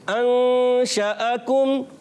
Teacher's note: کاف کو باریک رکھنا, کاف کا مخرج ہے زبان کی جڑ, سخت حصے سے